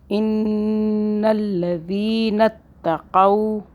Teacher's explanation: نون کو 2 مرتبہ آواز بھی بنائیں گے اور ساتھ میں ہم کیا کریں گے، غنہ بھی کریں گے 2 سیکنڈ کا۔